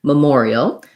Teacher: And then we have an EL ending. So we have a tense E sound, a schwa, and a dark L